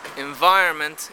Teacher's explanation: the assimilation of an alveolar nasal sound to a following labiodental sound in english is considered marked and people try to avoid it in careful speech which is